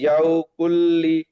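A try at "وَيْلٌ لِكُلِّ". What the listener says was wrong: ইয়াও না, ওয়াই।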